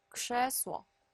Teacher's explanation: 그제스워 이렇게 다 무성음화 시켜서 발음하는 것이 세 번째 법칙입니다